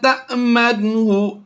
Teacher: وَمِنْ أَهْلِ الْكِتَابِ مَنْ إِنْ تَأْمَنْهُ، جیسا میں نے پچھلے یہاں پر سمجھایا تھا آپ کو کہ الف پر جزم ہو تب بھی وہ حمزہ ساکنہ ہی ہوتا ہے. تَأْمَنْهُ ہم نے جھٹکا دے کر پڑھنا ہوتا ہے حمزہ ساکنہ کو